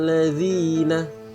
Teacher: suara dengung itu itu suaranya seolah keluar dari hidung nya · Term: Ghunnah